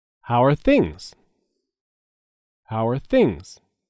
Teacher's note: are things how an are are said together how are things there is a stress on the word things